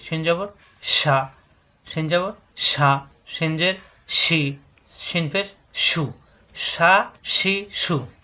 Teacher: জিহ্বার মাঝখানে উপরে তালুতে লাগবে। শিন, শুধু হরফ উচ্চারণে চারালি পরিমাণ টান হবে।